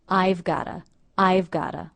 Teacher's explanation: The T here pronounced as a flap T or D because it comes between 2 vowels.